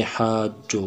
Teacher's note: حروف مدہ کے بعد جب شد اسی کلمے میں آ جائے تو وہاں مد لازم کلمی مثقل ہوگا، جس کی مقدار 5 الف کے برابر کھینچ کر پائیں گے